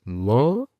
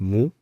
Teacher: La pronunciación correcta es mo, no es mu, es mo, es una vocal neutra.